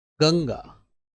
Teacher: जैसे ही मैंने गंगा बोला तो ग के बाद ण की आवाज आपको आई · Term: अनुस्वार, अणा की आवाज